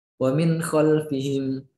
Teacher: Ha, kho, ain, gin, dan ha. Cara membacanya dengan jelas tanpa berdengung. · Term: idhar